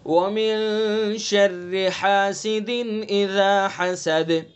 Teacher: شرری کی راہ باریک چونکہ راہ کے نیچے زیر